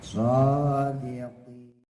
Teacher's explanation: Ada taswirnya, ada suara seperti siul burung.